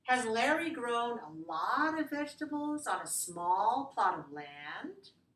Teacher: you should go up a little bit on the word land, which is our last word